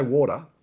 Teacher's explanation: We're saying these words, and we do drop the R's, and we drop the T's. So water would be W-A-D-A-H, water, right, if you want to spell it out, as opposed to every single letter.